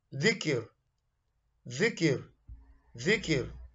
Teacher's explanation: This is pronounced from the tip of the tongue touches the bottom edge of the front upper central two teeth, similar to the English word then and day. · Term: dhal